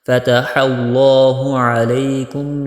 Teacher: لفظ اللہ کو بھی موٹا کر کے پڑھنا ہے۔